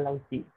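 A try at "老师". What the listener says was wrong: Lau Si, bukan Lau Si. Jangan di I ya. Dia rata-rata ke E. Si. Lau Si.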